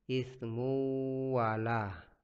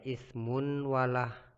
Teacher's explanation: jadi dibaca dengun. Ismu wala, jadi tidak dibaca ismun wala, tapi berdengun. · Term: idgham bigunnah